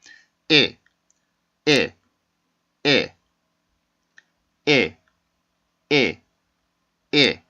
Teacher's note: 이 발음은 아랫입술을 살짝 내려주면서 아주 짧게 끊어주는 단모음입니다. 그리고 소리가 짧은 단음이고요.